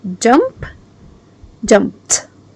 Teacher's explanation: The ed sound with voiceless sounds. You make the t sound.